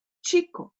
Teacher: on a un mot qui termine par un O, voyelle, donc on va appuyer sur l'avant-dernière.